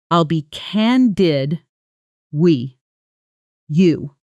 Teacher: When spoken quickly, I'll be candid with you often sounds like I'll be candid you, all blended together, no pause between the words at all.